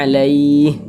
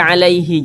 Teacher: huruf ha tidak dibaca panjang maka huruf ha kita sukunkan atau kita matikan